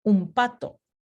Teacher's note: Entonces, el punto de articulación original de N es alveolar, pero después de este proceso de asimilación, su punto de articulación cambia a bilabial, porque P es bilabial.